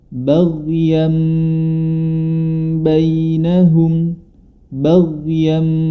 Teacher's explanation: nun sukun ataupun tanwin bilamana bertemu dengan huruf ba maka cara membacanya adalah dirubah menjadi Mim dan harus disertai dengan gunah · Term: iqlab